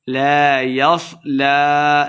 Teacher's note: لام کے اوپر کھڑی زبر ہے، دو حرکات لمبا کر کے پڑھیں گے